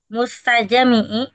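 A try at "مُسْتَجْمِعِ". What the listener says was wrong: Jimnya mati. Mustajmi. Mimnya sukun. Kasrah. Mustajmi. Isim fa'il.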